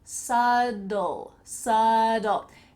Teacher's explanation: There is a B, but it sounds like a D.